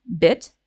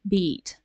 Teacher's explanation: the first one has a short uh vowel bit and the second one has a long sound